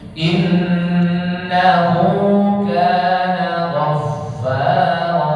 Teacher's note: setiap yang nun bertasydid itu dibaca gunnah, dengung. 3 ketukan.